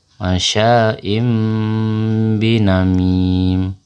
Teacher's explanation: Amin jadi ketika bertemu tanwin bertemu dengan huruf ba ta Hai dibaca dengan dengung dengan merapatkan bibir